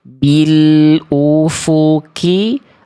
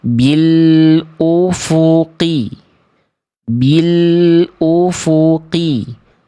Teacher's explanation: ketika melafalkan huruf qaf, itu masih ngerasa kayak ada nafas-nafas keluar, bil ufuki, berarti teman-teman kurang dalam.